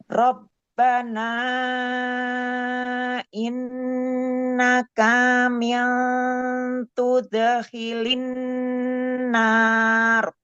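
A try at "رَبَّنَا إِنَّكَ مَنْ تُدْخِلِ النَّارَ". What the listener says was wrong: Bukan min, mantu. Nah, terus K-nya jangan ada mat ya. Rabbana innaka man tudkhilin nar. Mantud.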